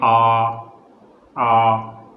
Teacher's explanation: तो हमारी जीभ पीछे से, यानी जीभ का जो पीछे का हिस्सा होता है वहाँ से आवाज़ निकल रही है